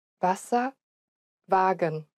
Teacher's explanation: The German W, on the other hand, is pronounced like a V sound.